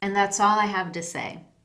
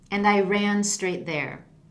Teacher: in all of those examples my voice falls and that indicates that I'm finished and that someone else can jump